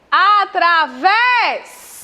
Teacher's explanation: A última sílaba está acentuada. É a sílaba tônica, que se enquadra aqui na oxítona.